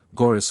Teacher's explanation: Gorice on the last syllable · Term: accent